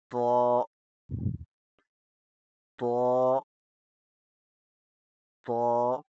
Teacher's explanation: تو کو موٹا کر کے اور سختی سے پڑھتے ہیں۔ تو جی، تو کو پڑھتے وقت زبان کی نوک اس ہل پر لگتی ہے۔